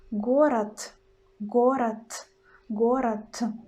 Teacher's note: In the end, we've got letter D, but we pronounce in Russian as it is T. So we pronounce город, город, город. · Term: voiceless sound T